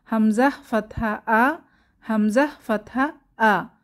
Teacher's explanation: কণ্ঠনালীর শুরু থেকে হামজাহ ফাতহা আ।